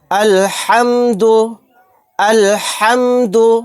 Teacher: یہاں پر ہا کو اچھے سے نکالنا ہے حلق سے